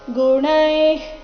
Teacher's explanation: ಗುಣೈಃ ಕರ್ಮಾಣಿ ಸರ್ವಶಃ ಗುಣೈಃ ಇಲ್ಲಿ ಗುಣೈ ಆದ ನಂತರ ಇರೋ ವಿಸರ್ಗದ ಉಚ್ಚಾರಣೆ ಸಹ ಅರ್ಧ ಖ ರೀತಿ